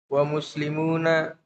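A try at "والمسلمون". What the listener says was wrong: wal muslimuna ada alif lamnya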